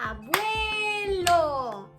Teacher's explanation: tenemos que nombrar la unión de estas dos vocales, ¿cierto?, la cerrada con la abierta, en un solo golpe de voz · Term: diptongo